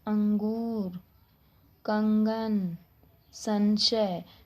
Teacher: इन वर्णों के अंदर हवा कहां से निकलती है नाक से निकलती है